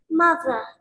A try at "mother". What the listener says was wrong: Good job.